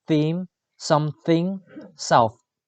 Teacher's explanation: The description of th is voiceless dental fricative.